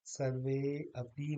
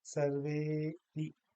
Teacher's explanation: ये कोई वर्ण नहीं है, बल्कि अ का लोप है, और अ को हम थोड़ा सा अलग से नहीं कहेंगे, उससे पहले जो वर्ण है उसके साथ ही हम कहेंगे।